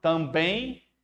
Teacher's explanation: Você está pronunciando esse M com som de I, também. Olha o I no final, também. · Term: ditongo